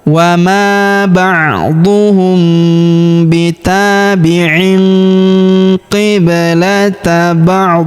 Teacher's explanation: Karena di sini terdapat tanda berhenti atau tanda wakaf yaitu waqaf qola ya. Tanwinnya menghilang berubah menjadi sukun.